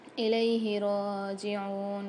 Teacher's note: را کے اوپر مشدد ہے، عین کے ساتھ واو ساکن ہے، دونوں کو ایک ایک الف مقدار کھینچیں گے